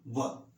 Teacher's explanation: ये दंत और ओष्ठ से उच्चरित होने वाला वर्ण है व, इसीलिए इसे कहा गया है वकारस्य दंतोष्ठम।